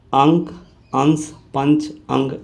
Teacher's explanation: अनुस्वार के उच्चारण में नाक से अधिक सांस निकलती है और मुख से कम